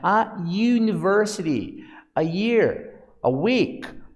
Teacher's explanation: apesar da letra ser uma vogal, o som é consonantal, porque existe uma obstrução no som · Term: som de semivogal